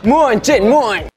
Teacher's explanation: Notice he's saying ooin, ooin, like mooin, mooin versus moon.